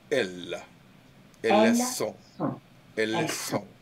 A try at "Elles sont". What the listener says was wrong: Have double L, so it's elles. Long. Elles sont.